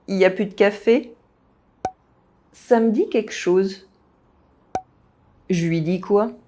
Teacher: You can also hear random L's being dropped from time to time when the French speak fast.